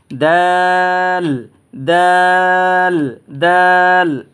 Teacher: এরপরে এই যে হরফটা দেখতেছেন না, এই হরফটার নাম হচ্ছে দাল, অর্থাৎ আপনার উচ্চারণের স্থান হচ্ছে, জায়গা হচ্ছে জিহ্বার আগা, আপনার জিহ্বার আগা সামনের দাঁতের 2 গোড়ার সাথে সমন্বয়ে এই হরফটা উচ্চারিত হয়।